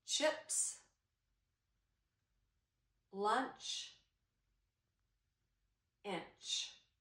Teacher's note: Your tongue was at the top right behind your teeth, and you held your breath for one little second, and then when you let it go, a quick burst of air came out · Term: ch sound